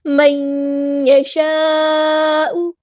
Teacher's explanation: connected مد، مد متصل، اسی کلمے میں مد ہے، اسی کلمے میں حمزہ ہے، 4 یا 5 کاؤنٹ ہم نے اس کو لمبا کرنا ہے